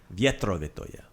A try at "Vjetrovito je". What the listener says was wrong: Vjetrovito je. Vjetro. Vjetrovito je. Vjetrovito je.